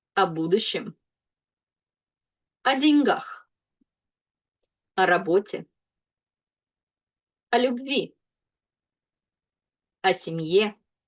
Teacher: I didn't point out that O will be pronounced as A because it's not stressed.